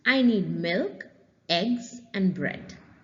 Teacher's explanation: Falling on each item, rising on the last. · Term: listing